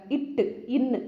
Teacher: இட்டு இன்னு அப்படின்னு சொல்லும்போது நாவின் நுனி அன்னத்தின் நுனி கூட மோதுற இடம்